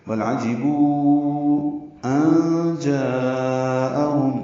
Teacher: نون ساکن کے بعد جیم آنے کی وجہ سے اخفاء ہے، نون کی آواز چھپائیں گے. جا میں مد متصل ہے، الف مدہ کے بعد حمزہ آنے کی وجہ سے اس کو 4 حرکات سے زیادہ ہم لمبا کرتے ہیں.